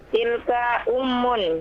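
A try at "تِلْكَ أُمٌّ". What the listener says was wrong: Naam.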